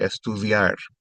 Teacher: Notice the D has a TH sound here, estudiar.